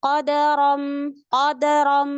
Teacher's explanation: dia tidak menyempurnakan harokat fathah pada dal, sehingga terdengarnya qadaram, qadaram. Padahal dia mau fathah, tetapi dia fathahnya nggak dibuka.